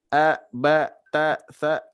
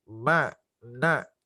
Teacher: Kalau huruf biasa tidak akan, karena hanya mim dan nun saja yang dia sebelum ditasdidkan juga dia sudah mendengung ya